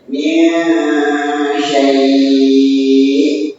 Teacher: syai'in sebenarnya tak panjang tapi karena madlin dibaca jadi panjang boleh 2 boleh 4 boleh 5